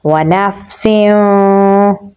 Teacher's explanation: سین میں سیٹی کی آواز آئے گی، تنوین کے بعد واو ہے تو یہاں پر ہم ادغام بدون نہ کریں گے تو پڑھا جائے گا وَنَفْسٍ۔